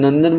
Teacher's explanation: નંદન બોલીએ તો એમાં અનુસ્વારનો ઉચ્ચાર આપણે ન કરીએ છીએ